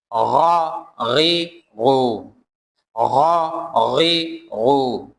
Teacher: حلق کے اوپر والے حصے سے پڑھنا ہوگا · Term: غین